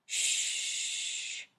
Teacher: When you say sh, there should be no movement. When you say sh, you can continue to make the sound for a long time.